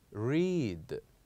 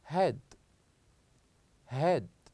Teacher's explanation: with the first one here we pronounce or we produce longer sound we said read but with the second one we produce a shorter one we said head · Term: long sound